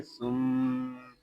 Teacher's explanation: یہاں میم شدد ہے، اس کو غننے کے ساتھ ادا کریں گے کیونکہ میم شدد میں ہمیشہ غنہ ہوتا ہے